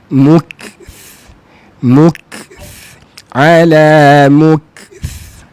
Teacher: kaf ke depan, jangan mok, yang ke dalam, ke depan sikit saja